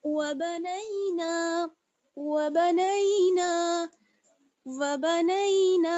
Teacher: अब यहाँ पर नून को थोड़ा सा खींचेंगे क्योंकि अलिफ मद्दा जोड़ा हुआ है इसमें